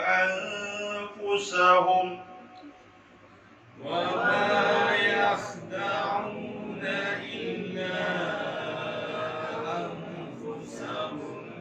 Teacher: Perhatikan banyak yang membaca nun dengan fa, dia tutup mulut. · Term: ikhfa hakiki